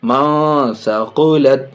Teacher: نون ساکن کے بعد سا حروف اخفا میں سے ناک میں آواز چھپا کے یہاں بھی پڑھیں گے